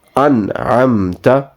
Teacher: both alphabets, noon and meme, will not have a prolonged sound.